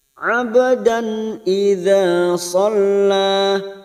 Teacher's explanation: Ba sukun qalqalah sugro yang mati asli di tengah kalimat jangan lupa dipantulkan, namanya qalqalah sugro.